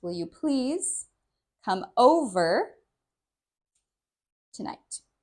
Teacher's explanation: we stress will, which is the verb